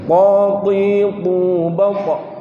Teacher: Itu kan huruf isti'la nggih. Isti'la itu fathah, kasrah, dhamma tetap tebel.